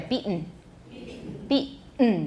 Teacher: But you have to have a really clear, strong glottal stop there.